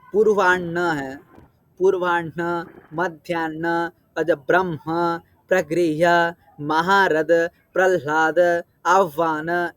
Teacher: जो ह का है उर स्थानीय है कंठ स्थानीय नहीं है